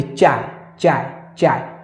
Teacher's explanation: आप चाय बोलिए, चाय चाय चाय, तो जीभ का जो भाग है वो ऊपर वाले भाग को, जो है दांत के पीछे वाले भाग को स्पर्श करता है, वही जो है तालु का भाग है, उसे ही तालु कहते हैं।